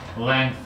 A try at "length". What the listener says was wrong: That's it.